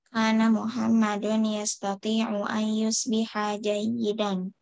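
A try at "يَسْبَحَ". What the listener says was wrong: Bentar. Sabaha yas, apa sabaha yus?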